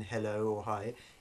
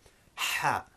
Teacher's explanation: So it's not the equivalent of our English H as in hello or hi. It's a much sharper sound with the throat constricting and the air rushing out much quicker.